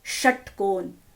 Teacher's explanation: तो जब हम षटकोण का उच्चारण करते हैं तो क्या होता है? हमारी जीभ अंदर जाती है और किसको टच करती है? मूर्धा को, upper part of our mouth. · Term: मूर्धन्य श